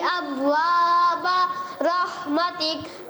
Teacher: ابوابا با میں تھوڑا سا قلقلہ آپ کا ہوا ہے مگر کمزور. ابوابا اور واضح کریں.